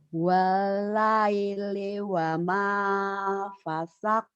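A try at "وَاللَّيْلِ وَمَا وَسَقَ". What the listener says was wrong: Bukan pasak Bu, wasak ya Bu ya.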